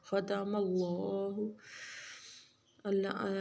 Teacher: خا بھی موٹا پڑا جائے گا اور اللہ کو، لفظ اللہ کو بھی موٹا پڑیں گے